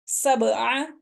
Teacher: ہن، سبع، با پہ قلقلہ کر رہے ہیں ہم، حروف قلقلہ میں سے ہے، با ساکن ہے تو اس کے اوپر قلقلہ کریں گے